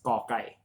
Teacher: This one is ka without the H, without any air coming out of your mouth when you pronounce this letter